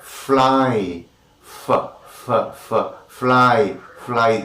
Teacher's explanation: But when you say fly, fly, you have friction. Lower lip and upper teeth come to very close positions. Air is let out with friction. It is friction, fricative sounds.